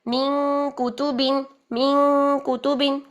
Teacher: کاف باریک، اخفا باریک